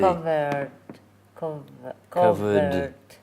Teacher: You're saying a T at the end, it's a D.